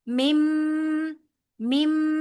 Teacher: میم ساکن کے بعد میم آ رہا ہے، لہذا یہاں پر کیا ہوگا؟ ادغام شفوی